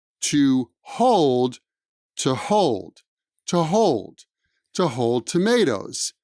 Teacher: whole tomatoes whole tomatoes we've already spoken about the fact that the oo sound in two is unstressed · the oo sound in to is unstressed